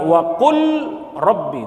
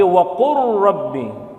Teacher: idgham mutaqoribain masuk ke dalam huruf yang makhraj dan sifatnya berdekatan wa Qur lam sama ro itu berdekatan wa Qur Rabbi Jadi